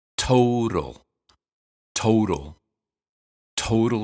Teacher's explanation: total has aspirated tea at the beginning and flap tea in the middle